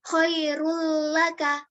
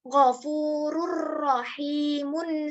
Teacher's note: nun sukun atau tanwin ke huruf berikutnya tanpa disertai dengan dengung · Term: idgham bilagunnah